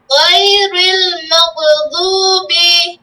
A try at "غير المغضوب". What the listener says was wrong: এই যে মাগ হয়ে যাচ্ছে, সবগুলো কিন্তু একই সিস্টেম বলতেছো তুমি, মাগ সাকিনের উচ্চারণ ধরে রাখবে, ছাড়বে না, মাগদুবি বলো, মাগদুবি গায়রিল মাগদুবি, দু গোল হবে, গায়রিল মাগদুবি